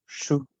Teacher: también es otra retrofleja, que es shu, ¿no? Shu, como si estuvieras chiflando